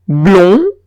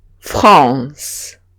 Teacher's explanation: Notáis que blond es más cerrado que France.